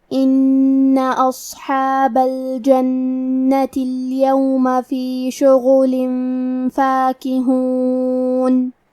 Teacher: کلمت ان میں حرف نون پہ تشدید ہے تو ہم دو حرف کے برابر نون کو پڑھیں گے کیونکہ تشدید کی اصلیت دو حرف ہے.